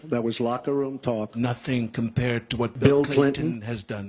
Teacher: we have a kind of a trumpeted out lip shape which Trump really does